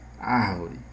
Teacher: o acento está na antepenúltima sílaba. Se está na antepenúltima, ela é proparoxítona.